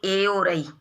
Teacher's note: जैसे कंठ तालु स्थान, कुछ ऐसे स्वर वर्ण हैं जो दो उच्चारण स्थानों से उनका उच्चारण होता है, जैसे कंठ और तालु, जिनको बोलते हैं कंठ तालव्य। कंठ और तालु दोनों से इनका उच्चारण होता है